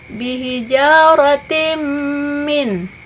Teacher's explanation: Yang pertama, pada lafaz bihijaratim min, di situ ada kasrah tain bertemu dengan mim, maka hukum bacaannya disebut dengan idgham bigunnah atau dibaca berdengung